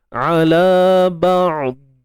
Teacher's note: Kat situ istitalah berlakulah pemanjangan tepi lidah dan huruf dad juga bersifat rakhawah. Jadi ada aliran suara tu, suara mengalir.